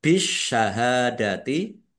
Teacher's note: alif lam syamsiyah karena tidak dibaca langsung masuk ke huruf berikutnya yaitu syin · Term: alif lam samsiah